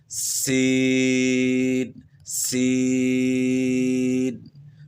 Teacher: نیچے دانتوں کے ساتھ زبان ٹچ کریں گے تو پھر سین کی آواز بنتی ہے